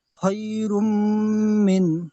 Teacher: তানবিনকে মিমের সাথে লাগিয়ে একালি পরিমাণ নাকের মধ্যে বাজিয়ে গুণনা করতে হয় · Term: ঈদগামে নাকিস